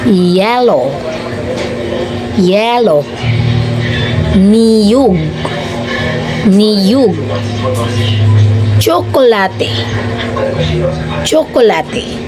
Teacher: ang tunog na ito ay nabubuo kapag ang dila ay lumalapit sa ating ngala-ngala. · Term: palatal ngala-ngala